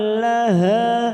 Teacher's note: Zinatal laha, ha fathah diikuti alif 2 harokat kita panjangkan